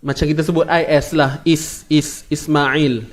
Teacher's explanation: Isma huruf sin, tak perlu keluarkan hujung lidah, tak perlu. Lidah duduk dalam je tuan-puan. Dia akan duduk di gigi sebelah bawah ni.